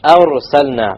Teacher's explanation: Heavy ra, because it's silent with a fatha before it.